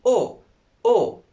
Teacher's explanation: for the closed o you are producing it naturally from the front part because your mouth is more closed